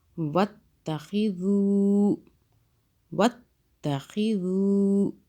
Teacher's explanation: ذال کو سافٹ پڑھنا ہے، زو نہیں کرنا سی ٹی کی آواز میں.